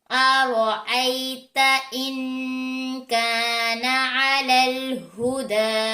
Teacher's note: रा के ऊपर जबर है, मोटा पड़ी जाएगी। या से पहले जबर है तो यालीन है, स्ट्रेच नहीं होगा · या से पहले जबर है तो यालीन है, स्ट्रेच नहीं होगा। नून सकिन के बाद रुफे इफ़ा में से काफ है, गुन्ना होगा, इफ़ा हो रहा है इसलिए। · दाल के ऊपर खड़ा जबर भी है और मद भी है, तो 3 सेकंड के लिए इसको स्ट्रेच करेंगे, यानी 3 अलिफ के लिए इसको खींच कर पढ़ेंगे।